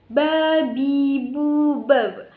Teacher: yaitu ba dengan menempelkan kedua bibir